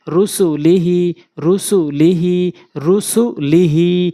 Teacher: হি শুধু টানতে হবে বাকি তিনটি দ্রুত পড়তে হবে